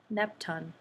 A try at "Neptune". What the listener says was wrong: So you said Neptune as if there were no E right there. Remember what Sneaky E does? He reaches over here and makes him say his name. Ooh, you. Sometimes he says you and sometimes ooh, but let's just say it's you. So Neptune.